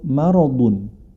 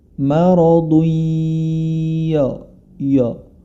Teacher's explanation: Maradun huruf mim ma dia memiliki sifat istifal atau tidak tebal atau lidah terpisah dari langit-langit